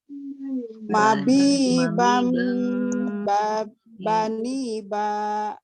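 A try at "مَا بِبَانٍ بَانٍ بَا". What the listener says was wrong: Bani ba langsung. Ni-nya jangan panjang.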